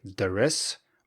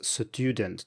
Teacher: Sometimes people insert a little uh in between, so they might say things like "deres" or perhaps "sudent" to avoid the ST in student.